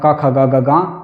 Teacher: कंठ के लिए आपने सूत्र पढ़ा अकुहः विसर्जनीयानाम कंठ अ और क वर्ग क ख ग और ह और विसर्ग का उच्चारण स्थान कंठ है।